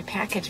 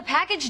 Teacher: the accent is in the first syllable, corresponding to pack